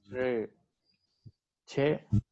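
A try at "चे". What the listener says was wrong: Che, you have to say che, long vowel.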